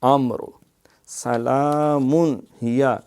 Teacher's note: یہاں اظہار ہے کیونکہ تنوین کے بعد حروف حلقی آ گیا